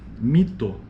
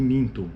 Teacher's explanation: Nesses casos, uma vogal nasal ocorre obrigatoriamente em qualquer dialeto do português, denominamos tais casos de nasalização. Note que a não articulação da vogal nasal causa diferença de significado